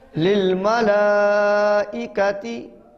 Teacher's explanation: لام کے اوپر کھڑی زبر اور مد ہے، اس کو لمبا کرنا ہے